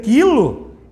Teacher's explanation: Se eu vou dizer quilo, não aparece o som do U.